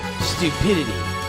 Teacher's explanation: Emphasis on the U sound. Japanese emphasizes the second syllable.